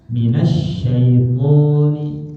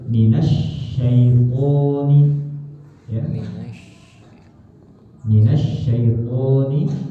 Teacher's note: pokoknya panjang, shinnya ada tasdid